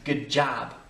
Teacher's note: les Américains disent presque good job, un A sur le O, mais good job, c'est bien, ok.